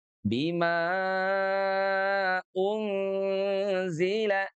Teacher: Ah, tanda panjang alif ini asalnya adalah dua harakat. Tapi bila bertemu dengan hamzah pada kalimat unzila, maka dia kita panjangkan bunyinya menjadi empat harakat. Boleh juga lima harakat, ya.